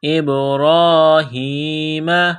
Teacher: با پر قلقلہ کریں گے، را کو دبانا ہے، را کو موٹا کرنا ہے ، ایک الف کے لیمٹ میں کھینچنا ہے، ابراہیم، ہا زیر